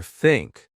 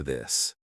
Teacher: Put your tongue between your teeth. Push air out for think. Add voice for this.